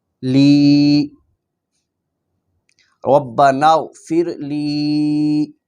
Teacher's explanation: اس کی یا کو لمبا کرنا ہے، یا لام کو لمبا کرنا ہے کیونکہ یہاں پر یا مدہ ہے